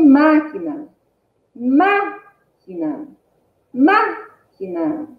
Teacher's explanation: Olha o nome máquina. Máquina. Máquina. Qual é mais forte? Máquina. É o má, né?